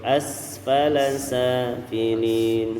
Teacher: Radadnahu as, langsung sinnya kita tunaikan sesempurna mungkin sifatnya. Ada sifat hamasnya, ya yaitu asfala safilin.